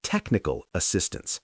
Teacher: For these compound nouns, the main stress falls on the first word.